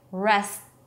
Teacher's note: I'm blocking the air with my tongue abruptly, and that is the T. That's what is perceived as the T.